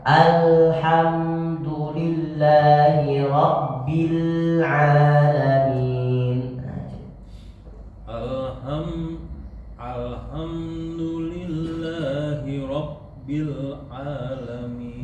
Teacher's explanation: Huruf lam itu ada tawasud. Tawasud itu Pak seakan-akan satu ketukan. Alhamdu, tidak sampai itu dua harokat.